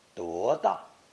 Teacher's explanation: Notice 多 大 with 多 pronounced second tone for emphasis.